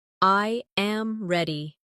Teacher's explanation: I am ready. The voice falls naturally at the end.